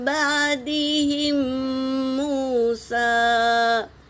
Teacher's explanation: میم ساکن کے بعد میم آیا ہے تو پہلے میم کو دوسرے میم میں ملا کر غنّے کے ساتھ پڑھیں گے، اسے ادغام شفوی کہتے ہیں۔